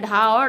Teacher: उच्छिप्त व्यंजन में क्या होता है, तो उच्छिप्त व्यंजन में है जो इन व्यंजनों का उच्चारण जीभ की नोक को उलटकर मूर्धा को झटके से कुछ दूर तक छूकर किया जाता है, उच्छिप्त व्यंजन कहलाते हैं।